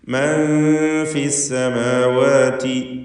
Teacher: മൻ ഫിസ് സമാവാതി, സാക്കിനത്തെ നൂനും ശേഷം ഫാവും ഇഖ്ഫാ ഹഖീഖി, മറച്ച് മണിച്ച് നൂനിനെ ഉച്ചരിക്കണം, അവ്യക്തമാക്കണം.